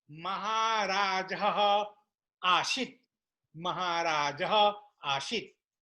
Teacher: Maharaja has Visarga, that Visarga disappear